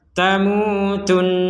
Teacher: itu harus didengungkan tamutun seperti itu ya minimal dua harakat panjangnya